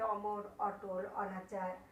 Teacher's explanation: শব্দের আদিতে না বোধক অ কি হয়? বিবৃত, অর্থাৎ অ এর মতো হয়।